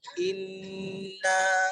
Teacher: Maka bunyi dengung tu yang ada pada nun, ditekan pada nun tu, maka ditekan lagi pada langit-langit dalam tu, ditekan sampai naik ke batang hidung kita.